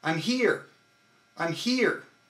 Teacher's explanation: I am NOT contracting my core muscles on I'm but on here which is the big word